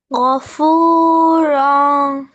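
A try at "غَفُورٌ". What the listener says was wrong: রন এরকম হয়ে যাচ্ছে কেন? মাপ চলে আসছে, হ্যাঁ। গফুরন। মানে তোমার, মানে কি এই জায়গাটা একটু মাদ হয়ে যাচ্ছে, এছাড়া ভুল নেই।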